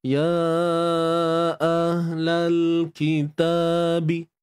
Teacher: ahlal huruf ha tu, ha simple, kita matikan pada bahagian pangkal kerongkong kita dan bunyi tu bagi clear. Bunyi tu bagi clear.